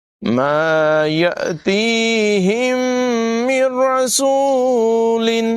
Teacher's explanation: نون کے بعد را حروف یرمالون میں سے ہے، یہاں پر بھی ادغام ہوگا لیکن غنہ نہیں کریں گے۔ من رسول، نون نہیں پڑھا جائے گا، میم کو را سے ملائیں گے۔